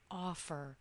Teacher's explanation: the first syllable in offer is stressed